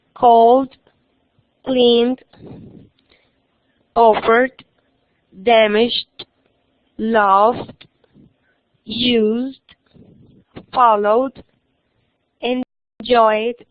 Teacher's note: cuando el sonido es voiced, con estas consonantes y con todas las vocales, entonces suena como una D.